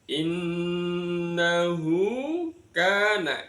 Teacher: ada nun tasjid dibaca ghunah mendengung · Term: gunnah mendengung